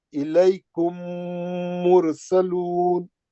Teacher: अब यहाँ पे मीम साकिन पढ़ ही नहीं रहे हम लोग, सीधा मीम मुशद्दद का गुन्ना करके आगे बढ़ जा रहे। · मीम साकिन मीम मुशद्दद में इदगाम कर गई, यानी घुस गई, दाखिल हो गई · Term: इदगाम शफी